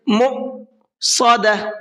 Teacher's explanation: نار مؤصدہ، مؤ کو جھٹکے کے ساتھ میں پڑھنا ہے، اس لیے کہ یہاں پر یہ حمزہ ساکن ہے اور حمزہ ساکن کے پڑھنے میں جھٹکا ہوتا ہے، تو اس کو جھٹکے کے ساتھ میں پڑھنا ہے، کس طرح سے؟